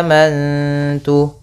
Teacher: nun sukun yang bertemu dengan huruf ta maka kita baca dengan bacaan Ikfa